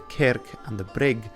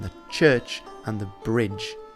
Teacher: in northumbrian old english you get far less palatalization